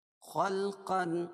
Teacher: خا کو موٹا پڑھیں گے، قاف کو بھی موٹا پڑھیں گے کیونکہ حروف مستعلیہ میں سے ہے